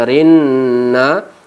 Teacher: kita rasakan udara masuk ke rongga hidung kita dan terasa juga agak bergetar bulu hidung kita.